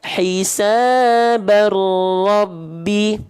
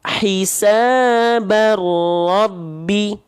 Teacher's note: fathah tain ketemu ro, maka bunyi bannya masuk ke huruf ro, ditandai dengan tanda tasydid. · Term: idgham bilaguna